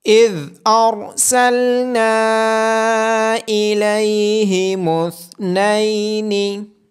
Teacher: اذ ارسلنا الیہم اثنین، ذال کو نرمی کے ساتھ ادا کیا جائے گا، را کی آواز موٹی ہوگی اور نون کے بعد الف مدہ ہونے کی وجہ سے نون کو لمبا کیا جائے گا، ثا کو نرمی کے ساتھ ادا کیا جائے گا۔